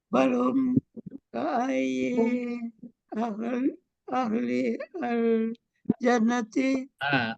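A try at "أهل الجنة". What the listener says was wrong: Ahlil, jangan ahli langsung aja ahlil.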